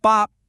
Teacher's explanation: We're using that unaspirated B sound. Remember, no puff of air. And we're combining it with that high flat first tone.